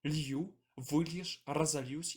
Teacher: Гук «л» не падаўжаецца паміж галоснымі ў формах дзеяслова ліць